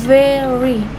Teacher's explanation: Cara penyebutannya sentuhkan gigi atas ke bibir bawah lalu ucapkan very. Bunyi v seperti f tapi bersuara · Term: vuh